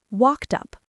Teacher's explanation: The e d sounds like a t and it jumps to the u. It becomes walked up.